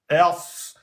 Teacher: Alors, elle se prononce en mettant l'extrémité de la langue derrière les incisives inférieures. Ers, c'est pareil que la lettre sin. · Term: lettre emphatique